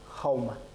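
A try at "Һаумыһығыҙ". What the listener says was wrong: Нет, хрипеть не надо. Хаумахагар. Просто выдыхаешь. Открыл рот и выдыхаешь. Хаумахагар. И «д» на конце. Здесь, кстати, что еще замечаете вот в первом слоге? Не совсем гласный после гласного. Здесь «у» не гласный. Это здесь «уэ».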